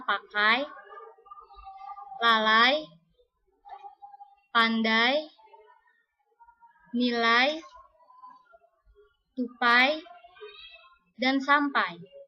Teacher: Bahasa Indonesia mempunyai 3 jenis diftong naik, yaitu 1. Diftong naik menutup maju. Misalnya pada kata pakai, lalai, pandai, nilai, tupai, dan sampai.